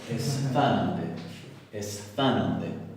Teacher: dos sonidos fricativos sordos tan cercanos el uno al otro, uno alveolar y el otro interdental